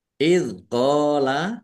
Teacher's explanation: dal sukun ya selalu diingat bukan qalqalah jangan dipantulkan